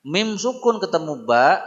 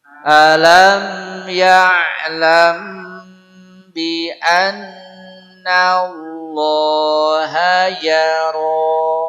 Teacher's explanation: Hukum dia ikhfa syafawi, tertahan sebentar.